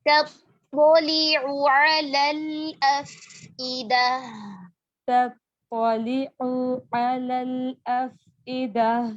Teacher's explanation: تطلع عین کے پیش کو لمبا نہیں کرنا